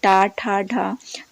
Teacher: टा वर्ग में जो आते हैं जैसे टा, ठा, ढा, तो ये आपके मूर्धन्य में आएंगे।